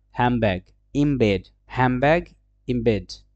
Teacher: হ্যামব্যাগ, ইমবেড, হ্যামব্যাগ, ইমবেড, right? So the N sound becomes M to match the bilabial